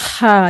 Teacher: हम जैसे लोग जो अजमी लोग हैं तो इसकी सिंपल अदायगी है हा जैसे हम बहुत तेज चलते हैं और हाप रहे होते हैं तो जो यह हापने वाला जो जहां से हापने वाला हा का साउंड होता है यह वाला ह वहां से अदा होता है